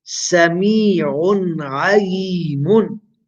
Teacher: Tanween has appeared before a letter of the throat. Ain is a letter of the throat, pronounced from the wasatul halq, the middle of the throat.